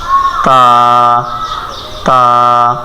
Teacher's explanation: তা উচ্চারণ হবে জিহ্বার আগা সামনের উপরের দাঁতের গোড়ার সঙ্গে লাগাইয়া